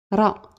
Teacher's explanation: c'est comme le r roul vous le prononcer avec la langue vous placez la langue derrière les dents au niveau du palais c'est un peu comme la lettre L là RA